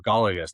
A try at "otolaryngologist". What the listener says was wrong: Not. There's no J. Otolaryngologist.